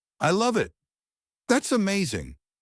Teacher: Our voice rises and then falls. It makes you sound expressive and natural. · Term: Rise-fall intonation